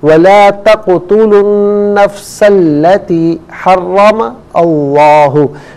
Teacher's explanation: نفسا اور ملا کر پڑھنے کی صورت میں نفسا میں سین کو التی کی لام کے ساتھ ملائیں گے، درمیان سے الف یعنی حمزہ کو حذف کیا جائے گا